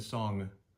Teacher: And song, if I say, oh, nice, let's go sing a song, you hear the ng at the end, which kind of comes from our nose. It's a bit of a nasal sound.